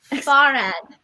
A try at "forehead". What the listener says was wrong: That's not how you pronounce it. Can we get like far? Like the word far. with no H.